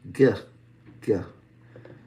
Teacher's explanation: So this is also a stop, but this stop is actually created in the back at the top of the back of the mouth, the soft palate, also known as the velum.